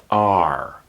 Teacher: Your tongue is folded to the back of your mouth. R. It doesn't touch the roof of your mouth, but it's folded back. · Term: R sound